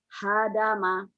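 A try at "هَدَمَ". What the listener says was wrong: ya, hadama jangan ada desahnya. Kalau ada desahnya kecil.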